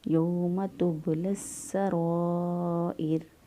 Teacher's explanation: اس سے پہلے اگر زیر ہو تو را کو باریک پڑھیں گے اور اس سے پہلے اگر پیش یا زبر ہو تو اس وقت را کو موٹا پڑھیں گے۔ اب یہاں پر حمزہ کے نیچے زیر ہے لہذا را کو باریک پڑھا